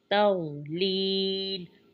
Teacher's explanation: वाद की अदायगी पुर करेंगे लेकिन ता को बरीक पढ़ेंगे। तौलील, लील में या मद का कायदा है और लाम पर हम वक्फ करेंगे।